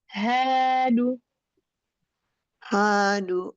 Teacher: Nah, du-nya jangan pakai hamzah.